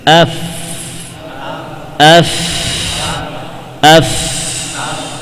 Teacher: Asyafah as-sufla, bagian bibir yang di bawah, bagian batin, bagian dalamnya ditempelkan dengan dua gigi seri atas.